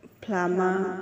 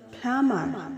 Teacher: British pronunciation flama without R, and American pronunciation flammer with R.